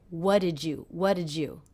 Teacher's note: the D and the Y here are combining to make the J sound